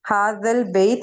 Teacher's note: या से पहले जबर है, हरफ लीन है, इसे नरमी से पढ़ेंगे।